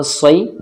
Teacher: صاد یا زبر صی، یا ساکن سے پہلے والے حرف کے اوپر زبر ہے، یا لین ہوگا، نرم آواز کے ساتھ جلدی پڑھا جائے گا